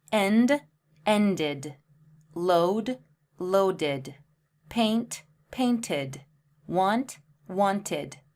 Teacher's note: Ed is pronounced like id with an extra syllable after verbs ending in t and d sounds